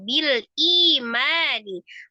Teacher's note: Ma-nya mad, ada alif sebelumnya fathah, dibaca 2 harakat.